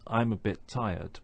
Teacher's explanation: we don't hear both of those T sounds we only really hear one · our tongue is in the right position to pronounce t at the end of bit, but we don't release that sound until we start to say tired. So it sounds like this: I'm a bit tired.